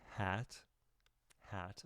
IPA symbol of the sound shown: æ